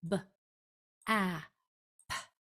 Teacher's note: Remember, only air on the P.